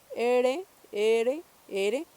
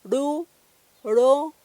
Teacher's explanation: Para hacer esa RH lo que hacemos es subir un poquito la punta de la lengua. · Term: retrofleja